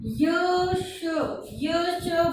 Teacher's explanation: यश बोलते ही जीभ जो है तालु से स्पर्श हो रही है, तो ये हो जाएंगे तालव्य।